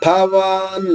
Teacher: భవాన్ మహాప్రాణి, భ ఒత్తుంది కాబట్టి మహాప్రాణం అంటాము. ఒత్తున్న ప్రతి అక్షరం మహాప్రాణాక్షరం.